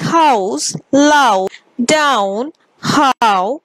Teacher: glide begins in position quite similar to ah moving up towards ooh